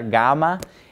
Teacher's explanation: So like when we pronounce the name of the letter, gamma, it's pretty close to being a G. It's just a little bit softer of a G, almost like part way between a G and a Y.